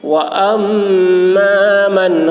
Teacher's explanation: نون کو بہت ہی جلدی کے ساتھ نون کو ظاہر کر کے پڑھیں گے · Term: اظہار